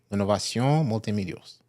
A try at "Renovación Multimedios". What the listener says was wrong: No, you were saying it like in French or something.